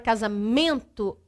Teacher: A sílaba tônica é a que tem maior tonicidade e a sílaba átona é a que tem um som mais fraco. Na palavra casamento, se você fala a palavra casamento, nós sabemos que a sílaba mais forte é men.